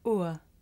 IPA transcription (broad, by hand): ʊə